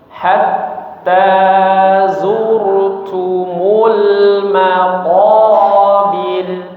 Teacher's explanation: wakafnya langsung berhenti jangan dipanjangkan menjadi maqobir